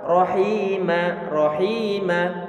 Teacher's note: ada ya sukun sebelumnya kasrah, sehingga suara i-nya perlu dipanjangkan dengan kadar 2 harokat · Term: mat tabi'i